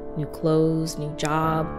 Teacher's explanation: There is no TH sound. It is pronounced close, like close the door. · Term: The TH is silent